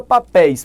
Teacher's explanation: papéis têm tonicidade na última sílaba · Papéis tem tonicidade na última sílaba, é uma palavra oxítona, só que termina em I seguido de S.